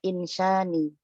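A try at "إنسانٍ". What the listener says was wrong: Insa. Insa. nin. Karena tidak ada alif lam.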